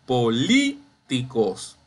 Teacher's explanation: Identifiqué la sílaba tónica, es la li.